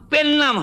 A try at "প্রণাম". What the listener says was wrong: পেন নাম নয়, কথাটা প্রণাম। একটা রফলা লাগবে।